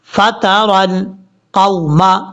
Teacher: جس کو واو لین کہیں وہ واو جو ہے لمبا نہیں کیا جائے گا، شارٹ کٹ پڑھا جائے گا